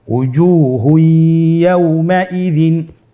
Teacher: তানবিনকে পরবর্তী হরফের সাথে মিলিয়ে গুন্নার সহিত পড়তে হবে। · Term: ইদগামে বাগুন্না